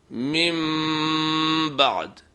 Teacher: نون کی آواز میم میں تبدیل ہو جائے گی اور غنہ بھی کیا جائے گا